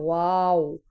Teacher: दोनों होठों को गोल करके और उनको मिलाना नहीं है